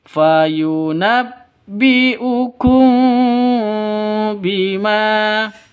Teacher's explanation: Mim mati bertemu dengan ba. Jadi cara bacanya samar, dengung, 2 ketukan. Kenapa? Karena ikhfa safawi.